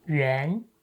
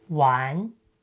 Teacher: When combined with the meaning brick ⺩, the initial sound shifts from ‘yu’ to ’u’. So, it becomes U + AN = ‘wan’.